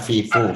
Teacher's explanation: Fil ardi, mengucapkan fa dengan cara menempelkan ujung lidah, dengan cara menempelkan ujung gigi seri atas ke perut bibir bawah